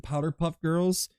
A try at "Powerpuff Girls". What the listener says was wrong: not, I hate to correct you, but it's not Powder Puff Girls. It's Power Puff.